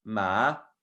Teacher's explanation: So the second tone instead is like you're questioning something. You're asking a question.